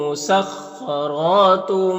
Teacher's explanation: خا حروف مستعلیہ میں سے پر پڑھیں گے، را کو اوپر کھڑا زبر ہے، را کو بھی پر پڑھیں گے اور ایک الف کے برابر کھینچیں گے۔ یہاں پر تنوین کے بعد با ہے تو تنوین کو اس چھوٹی سی میم سے بدل کر غنہ اور اخفا کے ساتھ میں پڑھیں گے، اس کو اقلاب کہتے ہیں۔